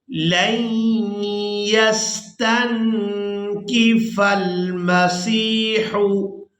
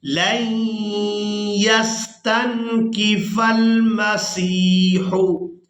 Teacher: लाम को या मुशद्दद के साथ मिलाना है और गुन्ना के साथ अदा करना है। लाम या ज़बर लन, या सीन ज़बर यस।